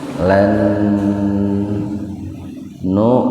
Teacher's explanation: huruf hamzah yang mati di tengah-tengah kata, jadi membacanya dihentakan